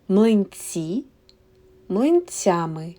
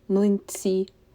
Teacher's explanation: Here we have ending ями because ц is a soft sound here. This ending і, млинці, makes ц soft.